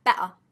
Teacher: flow of air better instead of better I'm still breathing that I stopped the flow of air to make the glottal sound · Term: glottal stop